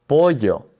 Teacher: Now, many people will say that the double l sounds like a j to them. However, the most common pronunciation of the double l in the Spanish speaking world is as a y sound. So, anytime you see that double l, you can kind of think of it like a y.